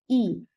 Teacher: इनके उच्चारण में मुख लगभग बंद रहता है या यह कह सकते हैं मुख द्वार लगभग सकरा होता है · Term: संवृत स्वर